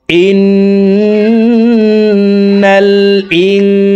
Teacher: হরকতের বামে নুনে মিমে তাসদিদ হইলে সর্ব অবস্থায় নাকের বাসি থেকে গুন্না করিয়া পড়িতে হয়। তো এই জেরওয়ালা হামজাটি তাসদিদওয়ালা নুনের সাথে 3 সেকেন্ড পরিমাণ গুন্না করে পড়ব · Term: ওয়াজিব গুন্না